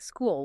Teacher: school is a single tightly bound syllable. It is a single rhythmic beat.